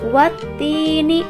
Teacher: ada hukum bacaan mad tabi'i, yaitu ya sukun sebelumnya berharokat kasroh. Maka cara membacanya harus dipanjangkan sebanyak 2 harokat